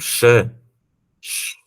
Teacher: Por que ele é mais grave porque é o recuo da língua da região alveol para a região pós alveol então ele vai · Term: o som mais grave